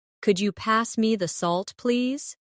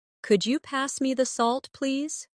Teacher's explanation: For example, if I say, "Could you pass me the salt, please?" Listen to the way my voice rises on could you and falls gently at the end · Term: intonation